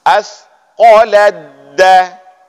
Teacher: Hilangkan huruf ta, masuk dalam huruf dal langsung.